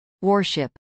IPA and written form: wˈɔːrʃˌɪp (warship)